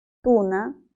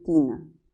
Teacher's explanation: la primera, la U, es posterior y la I es anterior. Tienen en común la altura de la lengua, ambas son altas.